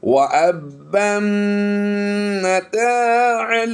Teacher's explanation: اگر ملا کر پڑھیں گے تو پھر اس میم مشدد میں غنہ ہوگا، اگر ملائیں گے نہیں تو پھر میم مشدد میں غنہ بھی نہیں ہوگا، کیونکہ میم مشدد جو ہے وہ پچھلے حرف سے ملا کر غنہ کیا جاتا ہے.